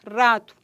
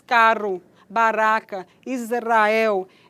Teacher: O articulado ativo toca algumas vezes o passivo, causando vibração. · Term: vibrante